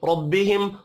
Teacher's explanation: रब्बिहिम रा जबर की वजह से पुर पढ़ा जाएगा।